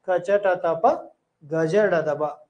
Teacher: ಒಂದು ಮಾತ್ರ ಕಾಲದಲ್ಲಿ ಇರ್ತದ ಇವಕ್ಕೆ ಕಡಿಮೆ ಉಸಿರು ತಗೊಂತೀವಿ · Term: ಅಲ್ಪಪ್ರಾಣಗಳು